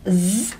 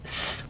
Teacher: If we do the sound zzz, you should hear a real buzzing in your ear. Whereas if you do a letter S for Sierra, you can't hear a buzzing. You should feel a real buzzing, and you should feel a difference in you should feel the vibrations here.